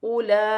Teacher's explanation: حمزہ پر پیش کی حرکت ہے, حمزہ پیش او, لام مد کھڑی زبر لا, اولا. یہاں پر بڑی مد بھی ہے, مد متصل, اسے 5 الف کی مقدار کھینچ کر پڑھا جائے گا, اور کھڑی زبر بھی ہے, تو یہ 6 الف کی مقدار تک کھینچ کر پڑھا جائے گا.